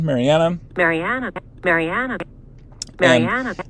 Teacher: there's obviously a rise here on the first word marianna